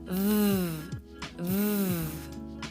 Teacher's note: It's like a vibrating sound. When you put your upper teeth on your lower lip, and then you blow out air with a sound, it kind of makes this warm, vibrating sound.